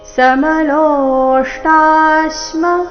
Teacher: ಇಲ್ಲಿ ಲೋ ದೀರ್ಘ ಬಂದು ನಂತರ ಆಘಾತ